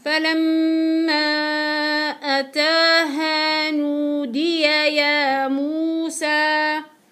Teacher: ميم مشددة ايش حعطيها؟ غنة طويلة. بعديها حعطي مد اربع حركات.